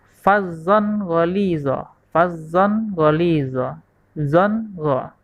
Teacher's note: karena tanwin bertemu dengan huruf lain maka cara membacanya harus dibaca jelas tanpa ada dengung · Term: izhar